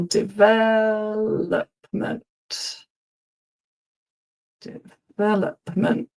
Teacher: the emphasis is on the second syllable